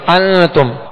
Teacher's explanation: ماشاءاللہ, یہاں اخفاء کا قاعدہ ہے. نون ساکن کے بعد تا حروف اخفاء میں سے آ گئی, لہذا یہاں اخفاء کا غنہ کریں گے